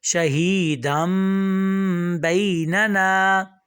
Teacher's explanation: ہم نے شہیدن نہیں کہا، دم کہا، ہم نے نون کی ساؤنڈ کو جو ہے وہ میم سے بدل دیا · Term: اقلاب